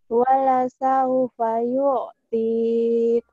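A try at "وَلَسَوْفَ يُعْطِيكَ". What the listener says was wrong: Wala saufa yu'tik. Hamasnya yang belum keluar ya. Yu'tik.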